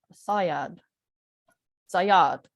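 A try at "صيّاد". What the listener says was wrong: Very good. Put the double vowel in where it should be.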